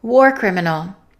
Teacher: war criminal is a compound noun, so we stress the first word